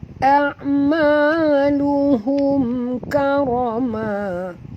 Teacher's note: Mim mati bertemu kaf. Tak boleh dengung. Izhar syafawi. Karoma. Ra ni ra tebal.